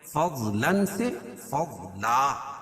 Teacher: 2 زبر کی تنوین پر وقف کی صورت میں 1 زبر کے قائم مقام الف پڑھیں گے